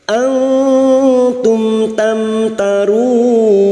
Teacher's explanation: mim sukun bertemu ta iidhar syafawi mim sukun dibaca jelas tanpa mendengung · Nun sukun bertemu ta ikhfa hakiki, kita samarkan bunyi nun sukun dan mendengung selama 3 harokat. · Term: idhar safawi